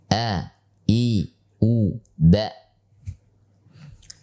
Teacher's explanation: Hamzah adalah huruf yang tipis sehingga posisi lidah kita cukup datar ketika mengucapkannya.